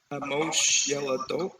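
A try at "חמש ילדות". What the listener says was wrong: That vowel is the end of that word is not. It's not o. It's not chamosh.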